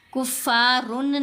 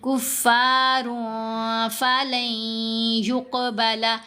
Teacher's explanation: کفارن نہیں پڑھا، آگے فا ہے نا تنوین کے بعد، تو ہم نے یہاں اخفا کیا. را 2 پیش رن میں جو نون کی آواز ہے اس کو ہم نے ظاہر نہیں کرنا اور ساتھ غنہ بھی کرنا ہے